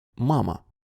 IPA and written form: 'mamə (мама)